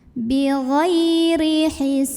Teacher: Ra-nya dibunyikan secara tarqiq karena barisnya kasrah, maka bacanya tipis.